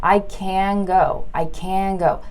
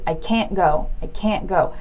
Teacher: can usually has a longer aaa sound like we draw it out